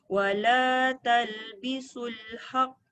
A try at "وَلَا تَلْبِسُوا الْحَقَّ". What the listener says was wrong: Oh, tak boleh panjang. Haqqa. Ko. Tak ada alif.